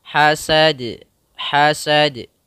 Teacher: kita pantulkan pada huruf da karena sifat yang agak mencolak pada huruf da yaitu sifat qalqolahnya sifat memantulnya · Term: qalqalah